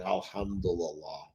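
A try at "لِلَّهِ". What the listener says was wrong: This right here is not the same as this. So this one says Allah, okay? This one says Lillah, Lillah. yeah, so we're saying Alhamdu Lillahi.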